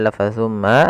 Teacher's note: ada bacaan gunah ditahan suara mnya sepanjang dua harakat baru dilepas